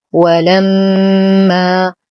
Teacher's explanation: نشد الميم بغنة أكمل ما تكون. لدينا ألف ساكنة ما قبلها مفتوح، فهو مد طبيعي يمد بمقدار حركتين